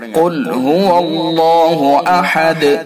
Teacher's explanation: قاف پر ہوگا، اللہ کا لام پر ہوگا، تو ان کو منہ بھر کے یعنی پر کر کے پڑھا جائے گا۔ نیچے دیا ہوا ہے، یہ لکھا ہوا ہے پر یعنی موٹا، تو پر کر کے پڑھیں گے۔